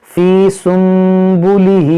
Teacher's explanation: دیکھیں یہاں پر بھی نون ساکن کے بعد با ہے تو یہاں پر بھی اقلاب ہوگا